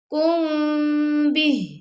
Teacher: کم بِہ، اور یہاں کو ہم نے ساکن کر دیا، ہا کی آواز آئی لیکن اس کی کھڑی زیر کی آواز نہیں آئے گی